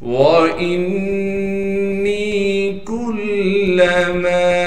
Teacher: واو کے بعد حمزہ ہے، حمزہ کو نون مشدد سے ملا دیں گے، نون مشدد پر غنہ کریں گے، پھر نون کے بعد یا مدہ ہونے کی وجہ سے نون کو ایک الف کی مقدار کھینچیں گے۔ اسی طریقے سے کاف کو باریک کر کے پڑھیں گے اور کاف کو آگے لام مشدد سے ملا دیں گے۔ · کاف کو باریک کر کے پڑھیں گے اور کاف کو آگے لام مشدد سے ملا دیں گے۔ میم کے بعد الف مدہ ہونے کی وجہ سے میم کو ایک الف کی مقدار کھینچیں گے۔